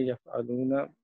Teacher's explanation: واو مد ہے، 2 حرکت دیں گے